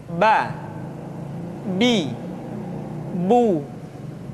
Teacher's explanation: Huruf Ba dikeluarkan dengan cara merapatkan kedua bibir kita.